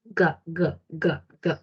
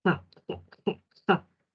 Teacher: Y si sigo moviendo mi lengua hacia atrás, el postdorso de mi lengua articula con el velo. Y ahí tenemos sonido de la ga de gato, ga, ga, ga, ga.